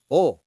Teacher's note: O sounds like O, like boat or go, but shorter and crisper.